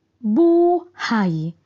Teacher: Bigkas malumay at may diin sa unang pantig